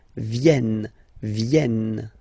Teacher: this classic ending ent for the third person of the plural is here, but phonetically it doesn't exist, so you don't pronounce it.